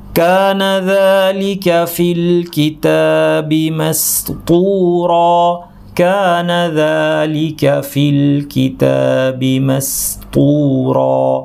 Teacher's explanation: এখানে সিনটা পাতলা করতে হবে, খেয়াল করে, কারণ পরে তটা ভারী।